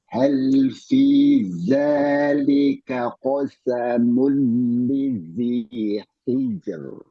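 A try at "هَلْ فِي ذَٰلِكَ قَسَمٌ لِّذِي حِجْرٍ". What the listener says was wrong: Ya, roknya tipis, tajamkan haknya. Rok tipis, tajamkan haknya.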